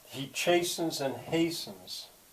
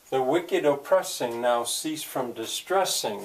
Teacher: So here we've got internal rhyme on the first and second strong beat.